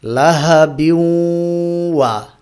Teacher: এখানে কি করলাম, তানভিনের পরে ওয়াও আসার কারণে তানভিনের যে শেষের নুনটা আছে এই নুনটাকে ওয়াওয়ের মধ্যে ইদগাম করে পড়লাম এবং এখানে গুন্না বাকি থাকছে। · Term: ইদগামে নাকিস